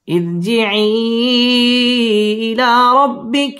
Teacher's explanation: ইরজিঈ মধ্যে মুনফাসিল 3 আলিফ টেনে পড়তে হবে